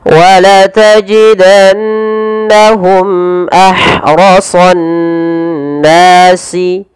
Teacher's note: harus dibaca dengan jelas suara mimnya tanpa ada penahanan wajidanahum ahrasi padaal ha yang dia sukun yang di mana Ha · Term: izhar syafawi